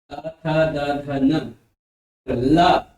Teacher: दंत यानी जब जीभ दांत के पास आती तब वे दंत ध्वनियां होती है